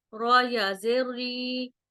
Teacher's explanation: یہاں پر را جو ہے وہ باریک پڑی جائے گی کیونکہ را کے نیچے زیر ہے